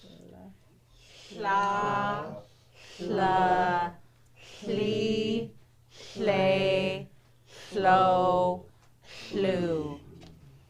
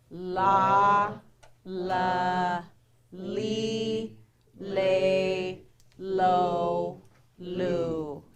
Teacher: Barred L, that slurred L, you're going to blow air out the side of your mouth.